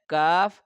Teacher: यह बारीक पढ़ा जाता है हमेशा। यह जुबान की जड़ और तालू के सख्त हिस्सा से इसको अदा किया जाता है।